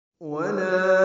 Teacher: واو ہونٹوں کی نا تمام گلائی سے ادا ہوگی. لا الف مدہ ہے تو حرکات لمبا کریں.